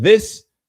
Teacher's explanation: th as in this? A voiced dental fricative